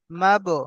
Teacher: যখন বায়ের উপরে সাকিন হয় তো একটু কলকলা করে পড়তে হয়।